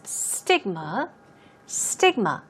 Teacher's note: the stress goes on the first syllable